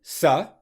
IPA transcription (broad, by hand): sə